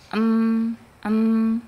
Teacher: dua bibir bertemu atau dirapatkan disertai dengan keluarnya ghunah, sengau ya dari rongga hidung atau alkhaisyum. · Karena suara tertutup, karena bibir kita kita tutup ya, maka suara keluar dari alkhaisyum atau dari rongga hidung